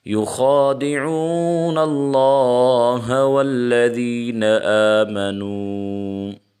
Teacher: اللہ کے لام سے پہلے زبر ہو تو اللہ کا لام موٹا ہوگا، اس کو موٹا کر کے پڑھیں گے۔